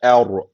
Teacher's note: ra kalın okunuyordu Dolayısıyla burada kalın okunacak E yani şöyle Er Ama bu elifi kalın yapmıyoruz Çünkü Elif ince bir harf Elif İnce ra kalın